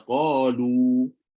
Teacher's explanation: kalau kita berhenti, contoh pada qalu, maka bila berhenti qalu akan kembali jadi mad asli sebanyak 2 harakat. Bila sambung semula, barulah dia jadi 4 harakat.